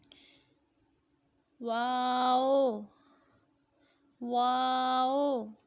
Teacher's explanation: دونوں ہونٹوں کو گول کر کے ناتمام بند کرنے سے واو